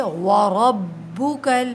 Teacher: را کو موٹا پڑھیں گے، زبر ہے